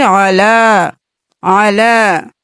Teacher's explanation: یہاں پہ کھڑی زبر ہے تو ایک الف کے برابر کھینچے